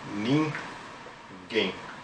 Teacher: uma oxítona, que é a última sílaba, é a sílaba tônica